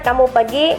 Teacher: kalimat kamu pergi memiliki intonasi naik di akhir untuk menunjukkan pertanyaan